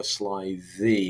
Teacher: It's that fricative sound there. It's the dental or interdental fricative sound that makes it seem creepy.